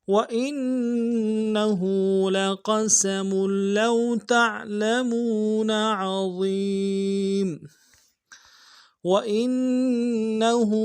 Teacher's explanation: لو تعلمون عظيم وإنه، واو کو نون سے ادا کریں گے، حمزہ کو نون کے ساتھ ملانا ہے، نون کے اوپر تشدید زور دیں گے